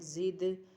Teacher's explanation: زا دال زیر زد، دال ساکن حروف قلقلہ میں سے، اس لیے یہاں پر قلقلہ ہوگا